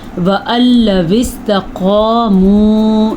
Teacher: جب کبھی قرآن مجید میں نون ساکن یا تنوین کے بعد لام یا را میں سے کوئی حرف آ جائے، یہاں پہ لام ہے، اگر را ہو یا لام ہو تو وہاں پہ ان کو آپس میں ملا تو دیتے ہیں لیکن نون ختم ہو جاتا ہے، کسی قسم کا غنہ نہیں ہوتا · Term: ادغام بلا غنہ